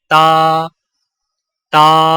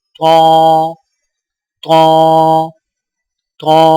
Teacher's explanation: تا کی آواز باریک ہوتی ہے، جیسے تا، تا۔ طا کی آواز موٹی ہوتی ہے، جیسے طا، طا، طا۔